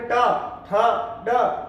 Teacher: और ऐसे कैसे अगर अपन बात करें ट, ठ, ड, तो सभी अक्षरों को बोलते समय जीभ जो है ऊपर के मसूड़ों से टकराती है, तभी इनका उच्चारण होता है, इसीलिए इनका नाम मूर्धनी है।